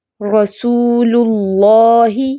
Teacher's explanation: दो लाम मोटे नहीं करने सिर्फ अल्लाह का लाम जो है वो मोटा होगा · نون لائٹ اور اللہ کا لام موٹا · اب رسول کا جو لام ہے وہ لائٹ ہے، وہ نہیں موٹا کر دینا، رسول اللہ نہیں، ایسے دو لام موٹے نہیں کرنے، صرف اللہ کا لام جو ہے وہ موٹا ہوگا۔